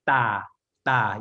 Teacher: So it's between a D and a T sound. So it's not exactly D and it's not exactly T. It's a hard T.